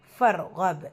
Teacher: ரா சுக்கூனை வல்லினப்படுத்தி ஓதணும்.